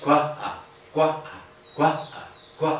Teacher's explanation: Esta es una consonante glotal oclusiva sorda que forma sílaba con la vocal que le sigue.